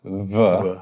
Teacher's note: a sound by the two lips becoming very close, v, can definitely be a fricative sound